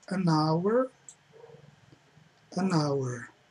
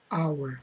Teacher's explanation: O H não tem som, hour. Você vê que você só fala as vogais